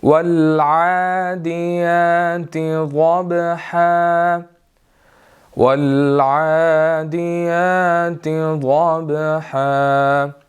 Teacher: عین ہے، اس کے اوپر کھڑی زبر ہے، آگے یا کے اوپر بھی کھڑی زبر ہے، ہم نے ان کو 1 to 2 سیکنڈز جو ہے وہ لمبا کرنا ہے، ٹھیک ہے۔ ضبحا کے اندر ضاد ہے، اس کو ہم نے موٹا ادا کرنا ہے۔ · با کے اوپر قلقلہ ہوگا ضبحا کے